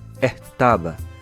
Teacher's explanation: Neste caso é a pronúncia caribenha e esta mesma palavra fica estaba, que é como se o S virasse um R no caso da pronúncia em português